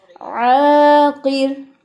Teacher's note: ज़्यादा लंबा नहीं करना, जितना अलिफ लंबा होता है बस उतना ही करेंगे. और काफ के नीचे ज़ेर है तो की पढ़ेंगे.